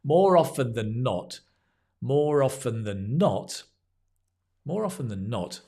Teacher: More often than not, we kind of stress the not.